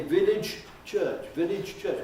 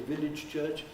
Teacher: We're willing to take the trouble to say village church and release that j at the end of village.